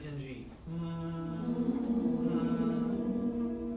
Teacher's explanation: that part of your tongue raises and meet your palate and pretty much completely closes your mouth off as a resonator so everything goes through your nose